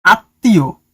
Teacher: ম ফলা যুক্ত হলে উচ্চারণে সে বর্ণের দীপ্ত হয় মানে কি ডাবল হয় এবং সামান্য নাসিক্য স্বর হয়